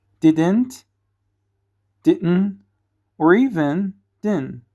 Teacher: native speakers often replace that duh with a glottal stop or drop it completely. So the full pronunciation changes like this: didn't, didn't, or even didn't.